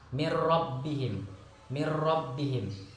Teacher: Contoh dari idgham bila gunnah ini, apabila nun mati bertemu dengan ro, contohnya mir rabbihim, mir rabbihim. Jadi apabila nun mati bertemu dengan ro, maka itu tidak dengung, langsung mir rabbihim, dimasukkan ke dalam disertai membacanya dengan tanpa dengung.